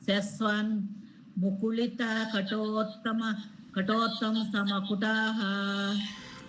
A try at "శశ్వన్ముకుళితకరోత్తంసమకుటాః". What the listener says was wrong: కరోత్తం సమకుటాః రకారం అండి. కరోత్తం సమకుటాః.